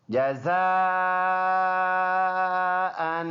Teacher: جیم زبر جا، زا الف مد زبر زا، جزا، حمزہ دو زبر ان، جزاء ان۔ یہ مد ہے 4 الف کے برابر، 4 سے 5 الف کے برابر، اس کو لمبا کر کے پڑھیں گے۔ وقف اس کا بنے گا جزاء، 2 زبر میں سے 1 زبر پڑھیں گے۔